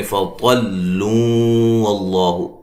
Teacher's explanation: ملانے کی صورت میں فطلوا اللہ، نون تنوین کا ادغام ہوگا مع الغنہ